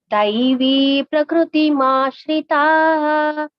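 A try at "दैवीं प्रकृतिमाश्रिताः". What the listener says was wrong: Here daivim is there. Im.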